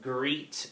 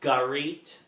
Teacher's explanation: Epenthesis is another phonological process or an error pattern in which a vowel is inserted between consonants where a vowel should not be inserted in the middle of a consonant cluster